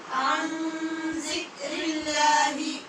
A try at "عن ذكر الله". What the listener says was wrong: زال میں سختی پیدا نہیں کریں اور عین کو اپنے مخرج سے پڑھیں ان نہیں عن ذکر اللہ